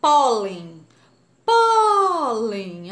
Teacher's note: a sílaba mais forte é o pó pólen é a penúltima a última ou antepenúltima é a penúltima